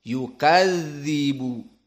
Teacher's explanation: Maka za dari huruf yang sifatnya rokhawah, maka di sini ada jenjang waktu. Yukadzibu, apalagi dalam keadaan musyaddadah.